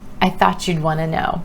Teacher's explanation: Notice how want to reduces to wanna